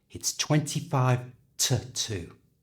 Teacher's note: I've changed the oo, the vowel sound in to a schwa